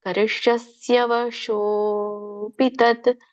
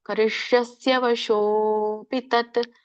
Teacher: ಶೋ ಎಳಿಬೇಕು, ಯಾಕಂದ್ರೆ ಅಲ್ಲಿ ಅಲೋಪ ಆಗಿದೆ, ಅವಗ್ರಹ ಬಂದಿದೆ.